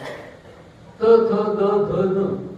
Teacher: जिभेचा अग्र दाताच्या आतल्या बाजूला आपटतो.